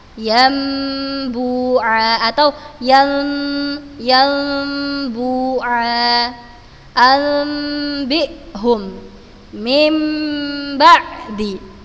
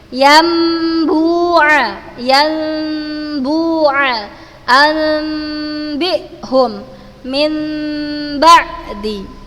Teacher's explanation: kita rubah huruf nun sukun ketika ketemu dengan huruf ba, kita rubah bunyinya menjadi huruf mim. Yambu'a anbihum min ba'di, jadi huruf mim. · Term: iqlab